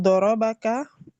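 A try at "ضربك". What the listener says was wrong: Yang terakhir nggak dipanjangkan kan?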